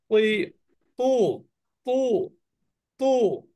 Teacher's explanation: ত এর উপরে যখন পেশ হয় তখন একটা পার্থক্য হলো ত টা কিন্তু একটু মোটা হয়